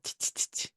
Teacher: la palatalización es eso que pasa cuando acercas la lengua al paladar y suena como a ts